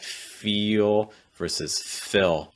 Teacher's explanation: for a dark l sound the key is making sure at the back your tongue is high and the front of your tongue is down